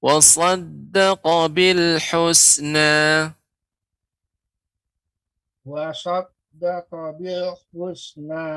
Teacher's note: huruf qaf masih panjang, Bapak. Seharusnya dia pendek.